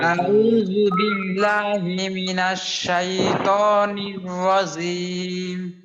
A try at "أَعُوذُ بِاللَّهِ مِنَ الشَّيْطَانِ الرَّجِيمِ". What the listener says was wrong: রজিম না এখনো পর্যন্ত আউযুবিল্লাহ আমাদের ঠিক হয়নি খেয়াল করতে হবে ইনশাআল্লাহ আউযু বিল্লাহি মিনাশ শাইতানির রাজীম